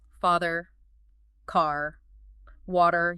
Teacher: It's fully erotic. You hear that clear R sound, especially when it's at the end of a word, that post vocalic R.